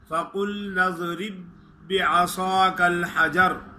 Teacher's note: फ़क़ुल काफ को मोटा अदा करेंगे